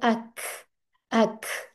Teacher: इसमें थोड़ी सी सांस की हमस जिसको कहते हैं उसकी आवाज आती है